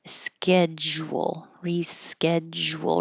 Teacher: It doesn't look like it, but there's a J sound. The D and the U here make a J.